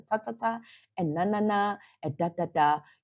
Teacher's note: sound aliyola sound is a sound that when you say it the tongue wants to touch or reach out for the groovy part of your palette but along the gum line behind your front teeth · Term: alveola sound